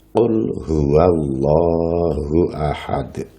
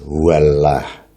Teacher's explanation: lam jalalah itu dibaca tafkhim atau tebal, yaitu apabila sebelum lam jalalah berupa harokat fathah atau dhammah. Contohnya seperti lafal Allah dalam ayat Qul huwallahu ahad.